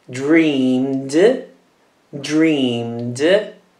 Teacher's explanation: Quindi si pronuncia una D alla fine e la vocale non si pronuncia.